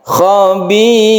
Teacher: Huruf ro apabila dia sukun atau dia itu berharokat, Dalam hal ini kita di ayat ini ada sukun ro, sebelumnya ada kasroh, maka ro-nya ini dibaca tarqiq atau tipis, membacanya tidak tebal, tidak mencucu. Bibir kita itu dikebawahkan. Khabir, jadi tipiskan ro-nya ini karena sebelum ro itu adalah kasroh.